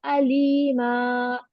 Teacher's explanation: to count करके stretch करेंगे और यहाँ पर नूने कुतनी को ड्रॉप करेंगे